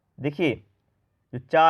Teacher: चा का उच्चारण स्थान होता है तालव्य